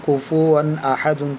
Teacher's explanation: تو یہ بھی مثال تنوین کی ہے کہ تو زبر کی تنوین کے بعد حروف حلقے کے 6 حرفوں میں سے حمزہ آیا ہوا ہے, اس لیے غنہ نہیں کریں گے